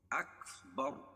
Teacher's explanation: را، را زبر را، اور را کے اوپر زبر ہے تو راپور ہوگی